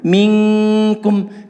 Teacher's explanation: Maka diperhatikan ketika misalnya di sini adalah setelah nun sukun itu adalah huruf kaf, maka ketika mengucapkan dengungan nun sukunnya sudah harus terposisikan mengucapkan makhraj huruf kaf. Jadi makhrajnya betul-betul kelihatan saat mengucapkan dengungan huruf nun tadi. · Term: ikhfa